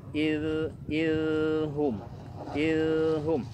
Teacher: Ya, suaranya mengalir, tidak tertahan. Suara mengalir berarti rokhawah sifatnya.